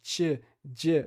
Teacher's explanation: Isso é uma consoante africada, que tem esse som, parece ter um CH antes, né, parece um tch, um tch.